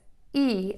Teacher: your tongue is going to be very high and very flat in your mouth and it's going to be behind your front teeth but not touching anything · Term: long e